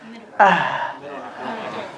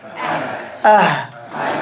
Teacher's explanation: From the very bottom of the throat.